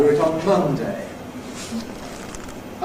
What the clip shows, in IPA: ˈmʌndeɪ